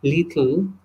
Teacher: the first la is the clear la, and the second and the last la is the dark la